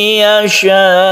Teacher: Dalam keadaan waqaf ini mad wajib mutasil, ini membacanya itu dipanjangkan sampai 3 alif, itu tidak masalah, jadi panjang sekali.